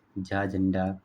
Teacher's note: तालाव्य महाप्राण घोष व्यंजन वर्ण का उदाहरण